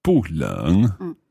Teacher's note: So you had 不热, it's not hot, because that's a second tone into a fourth tone, 不热. But when you're using 冷, which is the third tone, then the 不 stays as a fourth tone.